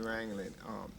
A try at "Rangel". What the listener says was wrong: It's not wrangling, it's wrangle, but